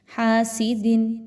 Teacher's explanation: حاسدن، ہا الف زبر ہا، الف مدہ ہے، 1 سے 2 الف کے برابر لمبا کریں گے، زیادہ کھینچ کے بھی نہیں پڑھنا اور کم مقدار بھی نہیں رکھنی۔ حاسدن، دال کے نیچے 2 زیر کی تنوین کے بعد حرف حمزہ آ رہا ہے، اور یاد رکھیے کہ یہاں پر اظہار کیا جائے گا، غنہ نہیں کرنا۔